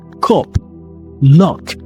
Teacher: The sound in words like strut vowel, very relaxed, you know, central, relaxed, short vowel. It's slightly lower than schwa.